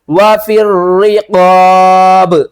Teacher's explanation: یہاں پر پھر جیم آ رہا ہے تو وقف کریں گے اور نہیں بھی کر سکتے، اور با ساکن کریں گے تو ساکن کی صورت میں با کو ہلا کر پڑھیں گے، یعنی کلکلا کریں گے